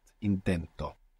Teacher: the accent in the present tense is going on the penultimate syllable the second last syllable